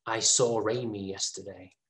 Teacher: in a vowel sound and er starts with the vowel sound british people add an r sound to connect these two words